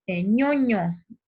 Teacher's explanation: Entonces, fíjate, para pronunciar ese sonido, ñoño, como es de que la zona media de nuestra lengua va a entrar en contacto con el paladar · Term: Palatales